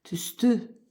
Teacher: Tüstü sözündə vurğu sona düşür